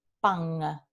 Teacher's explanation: el proceso se llama velarización del fonema alveolar n al alófono ng en algunos dialectos